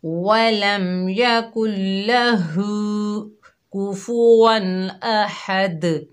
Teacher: الٹا پیش کو ہم کھینچ کر پڑھیں گے اور ہا کو حلق کے درمیان سے ادا کریں گے، دال میں کلکلا کریں گے، اور کوفوًا یہ بالکل رانگ ساؤنڈ ہے، کوفو، کوفو پڑھیں گے.